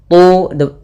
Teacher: Tu tebalkan huruf ta karena dia huruf isti'la.